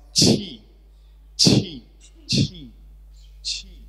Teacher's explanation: So after ch, there is an aspiration.